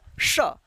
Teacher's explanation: जीभ जो होता है तालू में ऊपर जाकर चढता है तब इसका जो है साउंड निकलता है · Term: तालव्य श